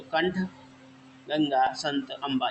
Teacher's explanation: अनुस्वार को बोलते समय हमें क्या है, सिर्फ नाक से आवाज़ निकलती है